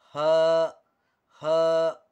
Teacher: ہا، یہ چھوٹی ہا کہلاتی ہے. بڑی ہا حلق سے ادا ہوتی ہے اور یہ حلق کے اوپر والے حصے سے ادا ہوتی ہے